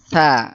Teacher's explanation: mahrajnya adalah ujung lidah ditempelkan ke ujung gigi Gigi seri. atas.